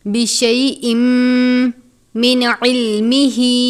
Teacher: تنوین کو میم مشدد سے ملا کر غنہ کر کے پڑھیں گے، یعنی بشئی ان نہیں پڑھنا بلکہ بشئی ام پڑھیں گے غنہ کر کے، بشئی ام من علمہ۔